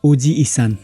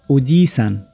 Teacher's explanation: अर्को ओजिसान, यहाँ जी पछाडि ई स्वर जोडियो र उच्चारण ओजी इसान होइन ओजिसान। जी पछाडि जी कै स्वर लम्ब्याई एउटा अक्षर बराबरको टाइमिङमा उच्चारण हुन्छ, तर पुरै ई भनेर चाहिँ उच्चारण हुँदैन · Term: लामो स्वर